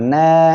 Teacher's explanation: মদের হরফ হবে এক আলিফ টেনে পড়তে হবে